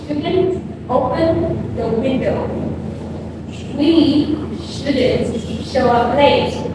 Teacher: The tip to stress on shouldn't for negative advice is before you shouldn't, you pause for a second, then you stress on the word shouldn't